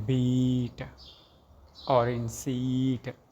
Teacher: E is high and front vowel.